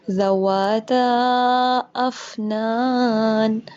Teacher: اس کے اندر مد ہو رہی ہے، 4 یا 5 سیکنڈ اس کو لمبا کریں گے. ذواتا افنان، افنان، ٹھیک ہے، افنان نہیں، افنان، فا واضح ہونا چاہیے.